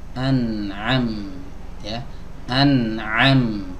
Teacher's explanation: Huruf mim keluar dari dua bibir yang dirapatkan